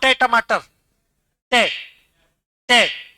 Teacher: तालू और दांतों के बीच में जीभ जाकर टकराएगी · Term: मूर्धन्य